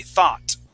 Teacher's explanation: Thought with an F at the end. Nope, we're going to pronounce that T.